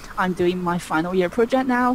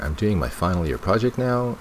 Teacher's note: her voice rises because there's more information to come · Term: intonation